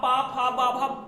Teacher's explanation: आप पा फा बा भा बोल के देख लीजिए, बिना ओष्ठ के नहीं बोल पाएंगे। इसको पकड़ के बोलेंगे पा फा, हो ही नहीं पाएगा, मतलब पॉसिबल ही नहीं है, संभव ही नहीं है।